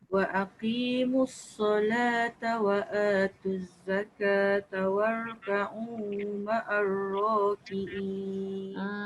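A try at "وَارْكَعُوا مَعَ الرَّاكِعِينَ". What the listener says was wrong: Pendek sikit. Dia kalau macam mula Kak baca tadi tu, dia jadi terheret-heret semua. Dia jadi tiga.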